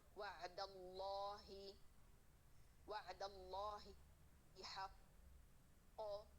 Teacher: हालत वक्त में कलकला, व कलकला यहाँ कवी हो जाएगा, वअद। हालत वसल में कलकला साकित हो जाएगा क्योंकि उस पर जबर आ जाएगी